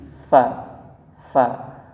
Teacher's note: Makhraj huruf fa ialah bibir bawah bagian dalam bertemu dengan ujung gigi